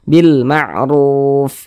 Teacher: Maka huruf ro dibaca tafkhim, dibaca tebal. Nah, sehingga pangkal lisan itu naik terangkat ke atas. Huruf ro-nya kita tebalkan.